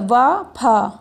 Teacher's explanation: इन वर्णों के उच्चारण में ऊपर के दांत तथा नीचे के ओठ का प्रयोग किया जाता है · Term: दंत्योष्ठ